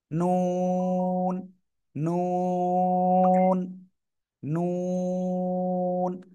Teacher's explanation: জায়গা আছে না এই দাঁতের গোলার একটুখানি উপরে এই জায়গায় লাগাবেন জিহ্বার আগা লাগিয়ে দুই ঠোঁট একটু গোল হবে